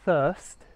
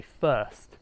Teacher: rather than pronouncing it a bit more like thirst i tend to just be a bit lazy and say first with an f